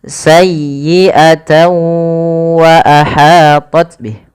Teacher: Karena huruf tanwinnya dimasukkan ke huruf waw. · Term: idgham